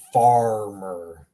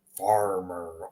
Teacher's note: in English, we have a rhotic R. So in English, it would be farmer. That's like the rhotic R. It sounds like there's a W in front of the R. Farmer or rolling.